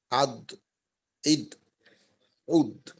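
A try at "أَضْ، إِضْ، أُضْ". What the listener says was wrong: হ্যাঁ আরেকটু নরম করার দরকার যে অর্থাৎ মনে করেন হামজা উচ্চারণ করার পর আমরা তো দদের মাখরাজে গিয়ে চাপ দেব ওই চাপটা যখন ছাড়বো ওই ছাড়ার সময় যেন কোনো আওয়াজ না হয় এইটা খেয়াল রাখতে পারলে ইনশাল্লাহ এটার পরিবর্তন হয়ে যাবে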